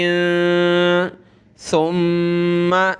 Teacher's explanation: ثم زبان نکالیں گے سا پر اور میم پر غنہ کرنا ہے